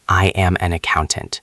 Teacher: The voice goes down. It sounds final. It sounds true. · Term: falling intonation